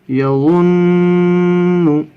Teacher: 1 الف کے برابر ناک میں آواز کو روکنا ہے، اس کو غنہ کہتے ہیں۔